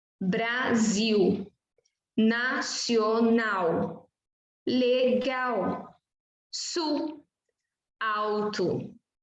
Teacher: A letra L representa o fonema L, quando aparece no início da palavra e no início da sílaba. Representa o fonema U, quando aparece no final de sílaba.